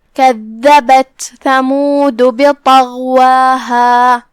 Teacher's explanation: پھر حرف الغین ہے، غین کی ادائیگی حلق کے اوپر والے حصے سے ہے، غین بھی حروف تفخیم میں سے ہے، تو ہم طا کو اور غین کو دونوں کو بھاری آواز میں ادا کریں گے. یہاں واو کے بعد مد طبیعی ہے، لہذا 2 حرف کی مقدار میں ہم اپنی آواز لمبی کریں گے · کلمت ثمود میں یہاں حرف ثا ہے، ثا کی بھی ادائیگی زبان کے سر اور اوپر والے دانتوں کے اندرونی کناروں سے ہے. کلمت بطغواہا میں یہاں حرف طا ہے، طا حروف تفخیم میں سے ہے، طا کی ادائیگی زبان کی نوک اور اوپر کے دانتوں کی جڑ سے ہے، تو ہم اسے وہیں سے پڑھیں گے اور اسے بھاری آواز میں بھی ادا کریں گے کیونکہ وہ حروف تفخیم میں سے ہے.